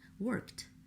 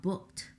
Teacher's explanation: Their ED is in the spelling, but we don't hear it. We only hear a T sound, worked. And then there are words like printed.